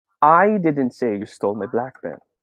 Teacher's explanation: now i will put the emphasis on the first word